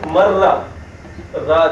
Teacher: there is an emphasis on ra and we'll later find out that it is basically two ra combined into one but for now we can just say that it's it we put an emphasis on it so it will be mra Ah okay so that's Shda.